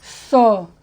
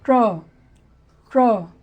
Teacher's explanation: इसमें सीटी निकलेगा स, इसमें सीटी नहीं निकलेगा, मोटा निकलेगा ट्र